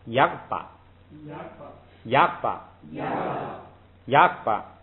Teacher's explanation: 这个注意是后边这个八呢读轻声，所以是前边是该怎么读怎么读，当做一个单独的音节读 ，然后带一个八这样读。所以头一个应该读那个三声，就是升降调，叫亚巴yapa,亚巴yapa,亚巴。yapa,第二个是莽瓦mama,莽瓦，mama,哎，它就跟那个你